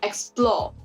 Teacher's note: take for example the word explore the stress is on the second syllable